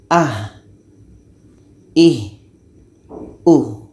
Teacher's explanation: Ha ini letaknya pada pangkal tenggorokan.